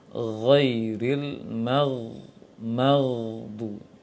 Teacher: Huruf ghain punya sifat juga 5 sifatnya: jahar, menahan angin, nafas; rakhawah, punya sifat mengalirkan suara; isti'la, infitah, dia isti'la, dia digolongkan dalam huruf yang tebal, huruf yang seakan-akan mau mengangkat pangkal lisan sedikit, walaupun makhrajnya adalah tenggorokan, tapi dia termasuk tebal. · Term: huruf isti'la